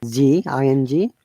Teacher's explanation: we do not pronounce g at all because it is a nasal sound